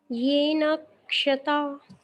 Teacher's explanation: क भी उसमें उच्चारित होना चाहिए, और षटकोण वाला जो है मूर्धन्य शकार, वो तो है ही। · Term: संयुक्त अक्षर